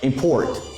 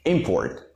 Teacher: if you stress the second syllable it becomes a verb if you stress the first syllable it is a noun